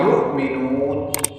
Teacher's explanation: یؤمنون میں یہاں حمزہ ہے اور جھٹکا دے دیں گے